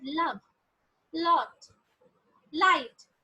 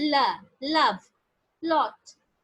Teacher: shut but the sides of the tongue are lowered and is the air escapes along the side of the tongue without any friction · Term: lateral sound